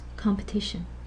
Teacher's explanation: this full value of E as in compete becomes a schwa. Listen to this, competition. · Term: reduced stress